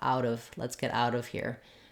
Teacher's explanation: But in connected speech, we rarely say out of. At a minimum, we would link it together and say out of. That T would become a flap.